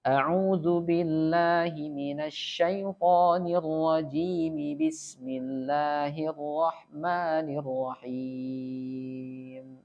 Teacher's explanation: mad arid li sukun itu yang di akhir, ketika kita sambung itu berubah menjadi mad tabi'i. Dipanjangkan cukup 2 harokat.